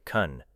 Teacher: You know can, but in an unstressed sentence it may sound like kun, while can't receives stronger stress